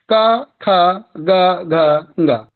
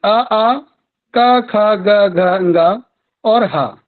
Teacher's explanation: इनको सबको हम कंठ से उच्चारित करते हैं और कंठ इनका उच्चारण स्थान हुआ। जहां से इनका उच्चारण उद्भव हुआ वो हमारा उच्चारण स्थान कहलाया।